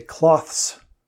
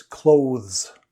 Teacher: both the th and the s are voiced